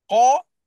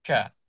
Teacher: Ah contoh lagi qaf dengan kaf kan qa ka makhraj dia sama iaitu pada pangkal lidah. Qa dengan kaf ni makhraj dia dekat pangkal lidah · Tapi berbeza sifat dia. Qa tebal. Kaf nipis.